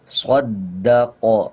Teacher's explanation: آگے قاف ہے، جب قاف پہ وقف کریں گے تو قاف پہ قلقلہ ہوگا، زبر کو سائلنٹ کر دیں گے۔